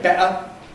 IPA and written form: ˈbeʔə (better)